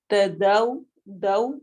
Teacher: داؤ میں ہمارے ہونٹ گول ہوں گے جیسا کہ ہم نے واو ساکن کو ادا کرنا ہے. لین ہو رہی ہے واو ساکن سے پہلے، فتحہ آ رہی ہے.